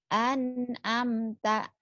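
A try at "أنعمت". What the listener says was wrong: Ain. An'amta. Ainnya nggak keluar.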